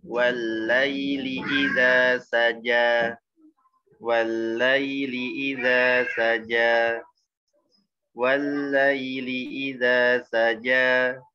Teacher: Wal, tekan wawunya tipis, langsung tekan ke lamnya. Wallaili, tekannya bukan tahan.